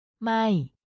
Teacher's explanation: It's pronounced with a falling tone, so your voice goes down slightly when you say it.